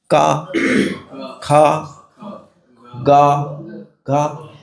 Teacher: जैसे क वर्ग है। क वर्ग का उच्चारण कहां से करेंगे? कंठ से।